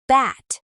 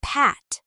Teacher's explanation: B is voiced, which means your vocal cords vibrate, and P is voiceless, which means there is no vibration. Put your fingers lightly on your throat.